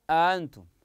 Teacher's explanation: بالهمز او التسهيل بين بين فانتم قراها انتم فثانيه قراو او نطقوها بين الهمزه والالف هذا هو التسهيل